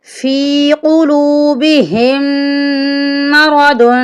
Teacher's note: دو نقطوں والی قوف ہے، اس کو ہم موٹا کریں گے